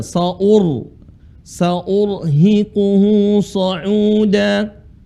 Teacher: ini huruf ra sukun dibaca tebal